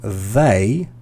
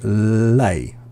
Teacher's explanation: quite often with Chinese speakers, instead of saying they, you'll say lay. So l instead of the.